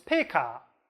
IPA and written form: peka (bat)